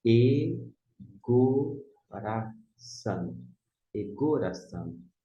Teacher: Começa com um E, não é aspirado. Se fosse o aspirado, ficaria re, mas como não é, egoração.